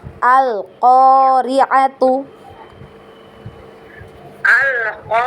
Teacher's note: Ainnya dipendekkan. A yang panjang hanya huruf qaf ya.